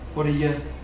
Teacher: all this run together, the T sound disappears, you pronounce the D very softly